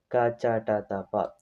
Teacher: ಅಲ್ಪಪ್ರಾಣ ಕಡಿಮೆ ಉಸರು ಜಾಸ್ತಿ ಹತ್ತಕೊಳ್ಳಲ್ಲ ಸ್ವಲ್ಪ ಉಸರು ಸಾಕು